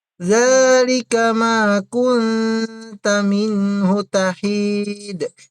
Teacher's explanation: Yung hu ay palitan mo ng hu. Wag mong patagalin sa hu kasi walang mad dito.